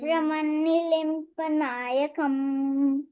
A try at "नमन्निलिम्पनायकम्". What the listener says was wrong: ब्रह्मन्नि नहीं, नमन, नमन्नि लिम्पनायकम्। नमन्नि लिम्पनायकम्।